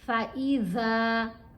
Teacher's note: فَإِذَا زبان دانتوں کے درمیان میں آئے گی